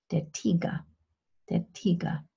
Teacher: The voiceless alveolar plosive, T, as in English tiger and German der Tiger